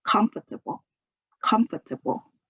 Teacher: You can pronounce it in 4 syllables, comfortable, or you can say it in just 3 syllables, comfortable. The stress is on the first syllable